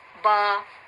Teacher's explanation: اور اس کی جو آواز ہے وہ ایک زبر سے دگنی ہو جائے گی، یعنی ڈبل ہو جائے گی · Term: حروف مدہ